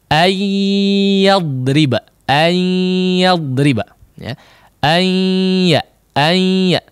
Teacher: Langsung si lidah itu menempel di makhraj huruf ya. Tidak ada peran makhraj huruf nun di bagian lisan ya. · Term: idgham bi gunnah